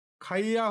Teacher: আরেকটি শব্দ যেমন খাইয়া, প্রাচীন বাংলায় খাইয়া হচ্ছে, এখানে রস্বই এবং আ স্বরের মাঝে অন্তুস্থ জ ধ্বনির আগমন ঘটছে। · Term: অন্তুস্থ জ শ্রুতির আগমন